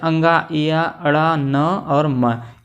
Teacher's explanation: नासिका से बोले जाते हैं हर वर्ग के पंचमाक्षर, जैसे अंगा, इया, अड़ा, न और म, ये नासिका से बोले जाते हैं।